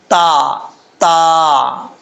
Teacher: تا کا مخرج ہے زبان کی نوک اوپر والے دانتوں کی جڑوں سے لگے تو تا پڑھا جاتا ہے